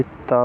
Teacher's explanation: दंत व्यंजन। जिन व्यंजनों का उच्चारण दांत की सहायता से होता है, इसमें जीभ की नोक ऊपरी दांत पंक्ति का स्पर्श करती है